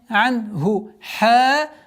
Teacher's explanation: Долгота в размере двух огласовок фатха над буквой ха.